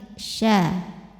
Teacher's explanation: Jadi sya, tengah lidah menyentuh langit-langit. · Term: tafashi